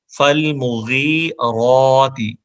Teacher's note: را پہ کھڑی زبر ہے، جب زبر ہو را پہ یا کھڑی زبر تو اس کو موٹی آواز میں پڑھا جاتا ہے